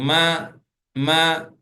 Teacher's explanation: இரண்டு உதடை இணைத்து மூக்கு வழியாகும் சத்தத்தை வெளிப்படுத்துறோம் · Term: மீம்